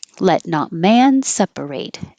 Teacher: Let not man separate, like in the wedding vows when they say what God has put together, let not man separate. So if you're contrasting God and man, then you might want to emphasize man.